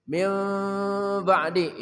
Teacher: nun mati bertemu ba dibaca iqlab Ya dibuka maulut sedikit min ba'di itu lebih utama karena ini